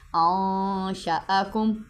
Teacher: انشاءکم میں نون پہ اخفا کریں گے، ناک میں سے آواز چھپائیں گے۔